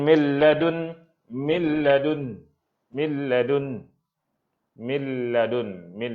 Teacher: mil nun jumpa lam. Jadi hilangnya nun terus. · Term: idgham kamil bi ghairi gunnah